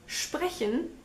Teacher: in sprechen, the S actually is a sh